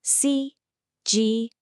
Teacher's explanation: It's a first tone followed by another first tone. So, that's that high flat sound.